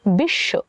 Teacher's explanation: শব্দের শেষে স এর সঙ্গে ব যুক্ত হয়েছে তাই আমরা সকে দুইবার উচ্চারণ করেছি বা স এর দৃত্ত উচ্চারণ হয়েছে বিশ্ব এবং ব এর উচ্চারণটি